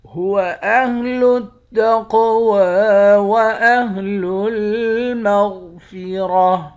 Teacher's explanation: قاف کو موٹا بھی پڑھیں گے، قاف پر قلقلہ بھی کریں گے، واو کے اوپر کھڑا زبر ہے، کھڑے زبر کو ایک الف کی مقدار کھینچ کر پڑھتے ہیں۔